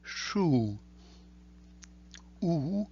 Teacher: Here is the U, the short version, O, as in pot, the longer version, U, as in shoe, except you keep the lips a little bit tighter together from the English shoe